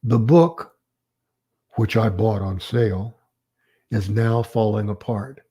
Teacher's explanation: did you hear what happened to my voice it went down